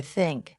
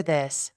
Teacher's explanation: Put your tongue between your teeth. Push air out for think. Add voice for this.